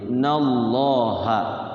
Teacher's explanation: lafaz Allah dibaca tebal tafkhim